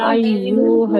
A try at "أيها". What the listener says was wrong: আপু আইয়ু টান হবে না, আইয়ুহাল আইয়ুহাল ইয়া আইয়ুহাল কাফিরুন। আইয়ুহাল আইয়ুহাল শব্দটা কি আপু? হ্যাঁ আইয়ু এরকম টান হবে না, কেমন?